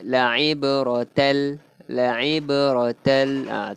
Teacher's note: Tanwin bertemu lam. Idgham bila gunnah. Memasukkan tapi tak dengung.